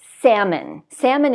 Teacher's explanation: We don't pronounce this L.